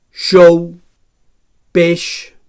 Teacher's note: So palatal fricatiu sord.